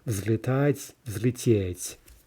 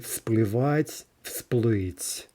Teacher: But let's add this to the motion by water verb, which starts with a p. Okay, p is unvoiced, so we're going to get a devoicing. And not only are we going to say s, we're going to write it, right? So we get всплывать, всплыть.